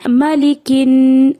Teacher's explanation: مالی، اور کاف کی، کاف کے نیچے جو زیر ہے اس کو بھی باریک کرنے کی ضرورت ہے، اور کاف کو ہیوی کر کے نہیں پڑھنا، لائٹ پڑھنا ہے۔ مالکن، اب نون پہ غنہ کا خیال رکھنا ہے۔